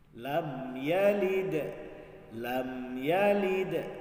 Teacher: Apabila ada mim sukun bertemu dengan huruf selain mim dan ba. Jadi dia dibaca jelas, tidak ada dengung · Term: izhar syafawi